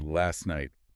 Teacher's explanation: often the t in last just gets dropped.